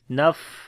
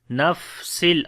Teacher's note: On the fa we make hams quality. Naf. Okay, like the continuation of our breath.